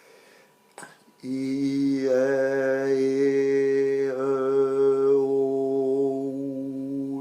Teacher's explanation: j'ai des voyelles qui se font en utilisant le passage prévu pour l'air, sans solliciter la partie supérieure qui permet le passage par le nez. La preuve est que je peux avoir le nez bouché et faire correctement les voyelles que j'ai appelées orales.